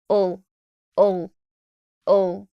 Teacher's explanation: And lastly, now I want to do the third syllable of the word, schedule, schedule. I have here a schwa and a dark L sound.